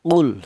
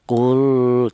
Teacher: Maka cara bacanya lam matinya ini dibaca jelas atau dibaca idhar. Adapun namanya ini idhar fi'li, yaitu ada lam mati yang bertempat di kalimah fi'il.